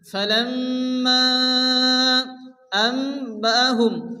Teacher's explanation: নুন সাকিনের পরে বা আসে, নুনকে মিম দ্বারা পরিবর্তন করে এক আলিফ গুণনা করে পড়তে হবে। আম্বাহুম, হুম গুণনা হবে, মিম সাকিনের পরে বা আসে, ইখফা স্বাভাবিক, এক আলিফ গুণনা হবে।